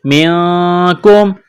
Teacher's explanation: نون ساکن کے بعد کاف ہے، حروف اخفا ہے تو غنہ کریں گے